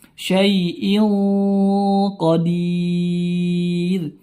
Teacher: tanwin bertemu huruf yang tebal maka ikhfa di sini hukumnya ikhfa namun ikhfanya ikhfa tebal